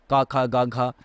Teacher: ক এর উচ্চারণ স্থান কিন্তু আমাদের কণ্ঠ